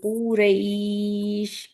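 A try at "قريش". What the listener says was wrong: थोड़ा काफ को और स्ट्रॉन्ग करेंगे, इसलिए कुरैश जो बोल रही है ना, इसमें काफ में क्या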